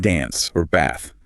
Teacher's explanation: The A in dance or bath is a broader ah sound like the A in father.